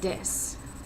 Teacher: turning the sound th into a d